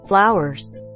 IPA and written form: ˈflaʊərz (Flowers)